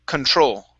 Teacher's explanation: The stress is at the very end